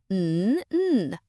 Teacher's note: Remember, we don't say N. We just say the humming sound. N. It's a very strong sound.